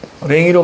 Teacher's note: 이 모음 무조건 역행이죠. 뒤에서 앞으로 주는 거니까 역행 동화. 다른 말로 전설 모음으로 동화된 겁니다.